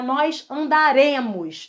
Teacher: Reparem que a tonicidade está totalmente fora do radical. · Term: arrisotônica